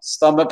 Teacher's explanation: Stomach, accent tonique sur la première syllabe.